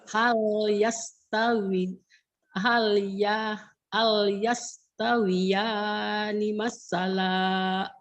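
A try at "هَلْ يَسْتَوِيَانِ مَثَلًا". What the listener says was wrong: Jangan masalah. Kalau masalah ada tasdid.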